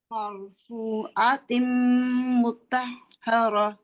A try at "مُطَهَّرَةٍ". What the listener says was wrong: تا نہیں بنانا، تو مطہرہ. راہ نہیں، راہ موٹا را.